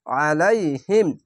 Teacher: আলাইহিম, আইন যাবার আ, লাম ইয়ে যাবার লাই, আলাই হা মিম জের হিম, আলাইহিম। আইনটিকে মোটা করে গলায় চিপে পড়বেন।